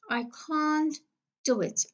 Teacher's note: So the t will be elided because we have ne, te, and de.